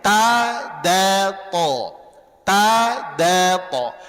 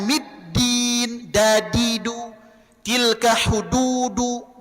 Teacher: Makanya dia ujung lidahnya nempel di gigi seri belakang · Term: makhraj dal